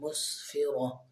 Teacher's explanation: را کے اوپر زبر ہے پر ہوگی